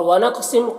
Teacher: قاف حروف قلقلہ میں سے بھی ہے تو قلقلہ بھی کریں گے